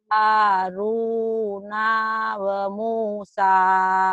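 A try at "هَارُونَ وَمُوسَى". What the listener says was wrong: Kenapa nanya panjang? Nanya pendek. Hanya panjang. Hanya panjang. Haruna wa Musa.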